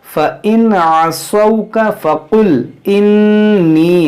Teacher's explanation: نون مشدد اس میں غنہ کریں گے